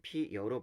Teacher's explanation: 여기 피어가 피여로 발음되는 겁니다. 뒤에 있는 어 같은 경우에는 단모음입니다. 그런데 얘가 발음이 될 때 여로 발음이 돼요. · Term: 반모음 첨가